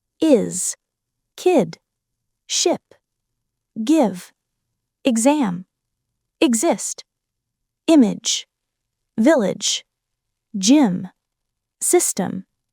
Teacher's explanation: the short, relaxed I sound, light and quick.